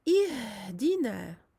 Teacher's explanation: J'expire et je donne un son doux pour le ha.